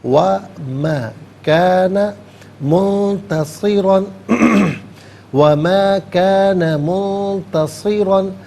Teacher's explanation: منتصرا میں نون ساکن اس کے بعد تا حرف اخفا ہے، تو نون ساکن کو اخفا کے ساتھ پڑھیں گے